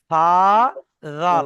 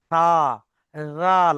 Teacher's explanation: আপনি যত উচ্চারণ করতে যান না কেন সা আর জাল কিন্তু অটোমেটিক হালকাভাবে উচ্চারণ হবে। ভারি করতে পারবেন না।